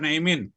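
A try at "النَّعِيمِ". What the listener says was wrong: Naimi. Bukan pakai naimi. Nggak ada tanwin. Nggak ada tanwin di belakangnya.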